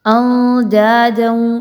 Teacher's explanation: نون ساکن کے بعد دال، اخفا کا رول اپلائی کرتے ہوئے نون کی آواز کو مخفی کرتے ہوئے پڑھیں گے